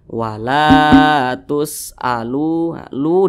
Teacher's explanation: maka huruf lam dibaca panjang Mad Thobi'i panjangnya dua harakat atau kira-kira dua katukan